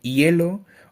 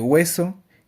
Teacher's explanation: El siguiente es el aproximante, que pues en este tipo de sonidos se produce el aire y fluye pues sin mucha obstrucción alguna, como puede ser en el ejemplo de hielo o el ejemplo de hueso, que podemos ver que el aire fluye sin ninguna obstrucción en la boca